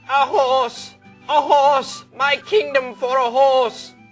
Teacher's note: ah is the first syllable it's unstressed horse is the next syllable and it's stressed